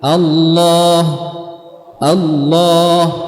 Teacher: Jadi untuk menebalkannya adalah dengan meninggikan pangkal lidah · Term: lam yang tebal